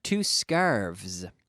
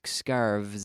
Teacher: nouns that end in F, when they are pluralized, are converted to the V sound